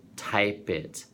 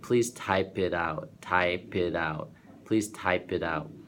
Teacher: So the P will shift over to the it. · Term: linking